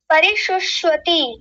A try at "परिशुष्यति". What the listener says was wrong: शुष्वती क्या है? वती नहीं, यति। नहीं, वती जैसा आ रहा है, वती नहीं, यति, यति। परिशुष्यति। यति बोलिए पहले, केवल यति। ध्यान रखिएगा, गलत बोल रहे थे अभी तक आप।